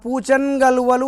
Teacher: దానికి కలువల్లోని కచట తపలు అంటే మన పరుషాల్లోని కా వచ్చింది. కలిపినప్పుడు చూడండి ఆ కా కాస్త గాగా మారింది.